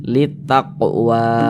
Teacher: mad tabi'i panjangnya 2 harokat. 2 harokat untuk lebih mempermudah kita dalam belajar, kira-kira sepanjang 2 ketukan, 1, 2, litaqwa.